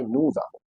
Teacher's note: After avons, there is nothing, so s is silent.